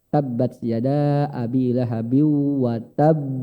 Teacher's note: di akhir bacaan dan bertasydid cara bacanya ditahan baru dipantulkan